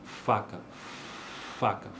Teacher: Então, por exemplo, faca, faca, é uma consoante desvozeada, não vibra